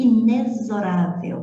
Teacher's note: você pronuncia o X aqui como se fosse Z